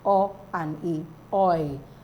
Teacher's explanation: oi, is a diphthong. It glides from one pure vowel to another.